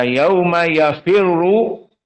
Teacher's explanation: semuanya muraqqaqah kecuali ra. Karena ra dalam keadaan dhammah musyaddadah. Yafirru dalam keadaan mufakhamah.